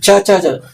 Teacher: ನಾಲಿಗೆ ತೆರೆದ ಅಂತದ್ರೆ ಹೊರಗೆ ಬಂದಂಗೆ ಆಗುತ್ತೆ ಕ್ಷಮಿಸಿ ಅದಲ್ಲ ಅಗಲಿಸಿದ ಅಗಲವಾದ ನಾಲಿಗೆ ಅಗಲವಾದ ನಾಲಿಗೆಯಿಂದ ಚ ಬರುತ್ತೆ